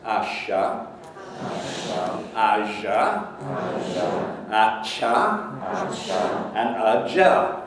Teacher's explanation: between the palate and the alveolar ridge, and a big chunk of the tongue goes up to make these sounds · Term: palato alveolar